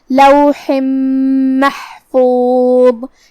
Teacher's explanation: کلمت لوح میں یہاں حرف الحاء ہے، حاء کو ہم حلق کے درمیان والے حصے سے ادا کریں گے، جو کہ اس کے نیچے تنوین زیر ہے، پھر حرف المیم آتا ہے کلمت محفوظ میں، یہاں بھی حکم ہے ادغام بغنہ، ہم یہ حکم کو ایسے ادا کریں گے، لوح محفوظ۔